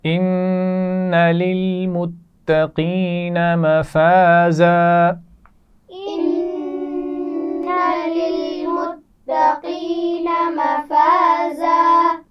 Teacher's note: للمتقین تا پر تشدید ہے تو اس کو سختی سے پڑھا جائے گا